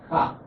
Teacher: The H is put there for aspiration. So KH is actually the aspirated sound of K.